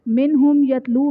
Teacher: نون ساکن کے بعد حروف حلقی میں سے ہا آ رہا ہے تو یہاں پر اظہار کا قاعدہ ہوگا، یعنی نون ساکن میں ہم غنہ نہیں کریں گے۔ میم ساکن کے بعد حرف با اور میم کے علاوہ یا آ رہا ہے تو یہاں پر اظہار شفوی کا قاعدہ ہوگا، یعنی میم ساکن میں ہم غنہ نہیں کریں گے۔